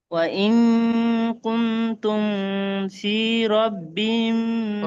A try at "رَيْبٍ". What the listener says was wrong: রয়বিম, রব্বিম নয়, রয়বিম, রয় ইয়া যাবার রয়, বা দুজের বিন, রয়বিম, এইভাবে।